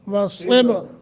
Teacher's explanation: واو صاد کو موٹا با پہ قلقلہ